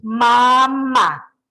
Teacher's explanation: Esta es una mamá, se llama bilabial, se hace con los dos labios